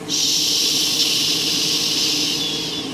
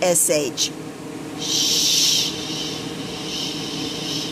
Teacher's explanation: if I'm saying SH I can make it go on and on and on and on